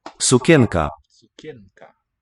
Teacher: listen to the N in sukienka. It's dental and not velar.